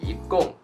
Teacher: So 一 this character originally is the first tone, but here because it meets the fourth tone and then it changes its tone to the second